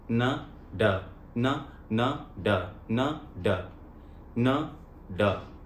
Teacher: इसमें थोड़ा सा फर्क यह भी है कि न का उच्चारण हम इस हिस्से से करते हैं और ड का उच्चारण हम थोड़ा गले के और निचले हिस्से से करते हैं, न ड न न ड न ड न ड। टच वही होगी एक ही जगह पर, लेकिन हल्का सा ड में थोड़ा सा बेंड देते हैं जीभ को